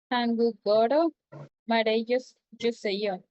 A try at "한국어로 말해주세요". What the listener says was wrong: Muy bien, muy bien. 한국어로, un poquito más de acento en el ro.